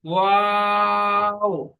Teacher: ওয়াও কেও পড়ার সময় আমরা তিন আলি পরিমাণ টান দিয়ে পড়বো, কারণ ওয়াও এর নিচেও তিন লেখা ছিল, তিন লেখা আছে অলরেডি।